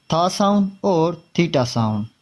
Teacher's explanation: Dental sounds produced by putting the tip of the tongue between both teeth.